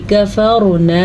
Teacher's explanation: را کو پر پڑھنا ہے، را ساکن سے پہلے زبر ہے تو اس لیے را پر پڑھی جائے گی